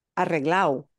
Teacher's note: Y en Sevilla es frecuente que la gente se come la letra D. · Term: D's getting dropped